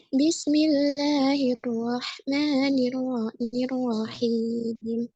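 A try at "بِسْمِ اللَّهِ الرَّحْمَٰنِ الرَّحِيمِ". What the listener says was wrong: Sin syukurnya jangan cepat-cepat. Bismillahi, jangan bismillahi. Bismillahi.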